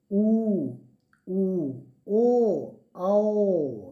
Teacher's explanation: ये आ मिला करके 5 वर्ण वृत्तमुखी स्वर हैं। इसके उच्चारण में आप देख लीजिए, हमारे उच्चारण करते वक्त होठ गोलाकार हो जाते हैं